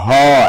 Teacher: একদম কণ্ঠের নলের ভিতর দিয়ে চলে আসতেছে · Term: কণ্ঠ নালীয় ধ্বনি